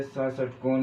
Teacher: स षटकोण जब बोलोगे तो ये मूर्धावस्था में आवाज आती है इसकी, तो इसीलिए इसको कहते हैं मूर्धन्य स।